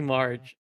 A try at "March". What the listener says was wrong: Okay, so is pronouncing it a bit like Marge, but it's March. Like Marge.